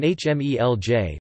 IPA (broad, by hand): hmêʎ